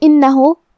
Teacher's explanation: کلمت انہو یہاں حرف النون ہے اور اس پہ تشدید ہے، لہذا تشدید کا دھیان رہے. آخری میں ہا پہ الٹا پیش ہے تو یہاں حکم ہے مد صلہ صغرا. ہم اپنی آواز 2 مد کے برابر لمبی کریں گے